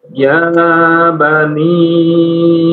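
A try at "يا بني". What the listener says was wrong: Ya bani tidak terlalu panjang. Ya bani. Pendek 2 harokat aja.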